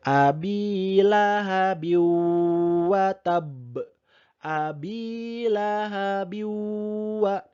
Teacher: Dibaca masuk dan mendengung 1,5 alif. Ingat, masuk, dengung. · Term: Idgham bi gunnah